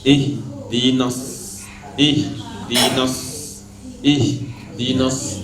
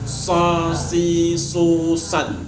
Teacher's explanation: Huruf shad, punggung lidah naik sedikit ke atas. Punggung lidah dan seolah-olah lidah kita tarik sedikit ke belakang.